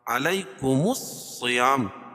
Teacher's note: صاد کو پر پڑھیں گے